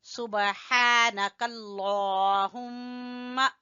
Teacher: सुबहाना, हा के ऊपर खड़ी जबर है, नून को छोटा पढ़ेंगे, काफ को लफ्ज अल्लाह से मिलाएंगे और लफ्ज अल्लाह को मोटा पढ़ेंगे। सुबहानकल्लाहुम्मा, मीम मुशद्दद का गुन्ना अदा करेंगे।